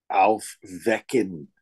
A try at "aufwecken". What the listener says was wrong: Aufwecken. But emphasize the prefix. This is the prefix because this is a separable verb. Aufwecken.